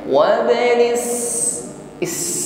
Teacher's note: Yang kedua as-safir ya, ada suara tambahan desis ya yang keluar dari ujung lidah dengan gigi sari bawah.